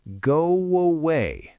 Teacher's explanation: I am literally putting a W in the middle of the phrase. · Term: intrusive sound